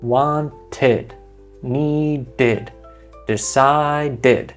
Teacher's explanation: And I'll tell you, if a verb ends with the letter D or the letter T, you're going to need that extra syllable. So then that TED or that DED becomes its own little beat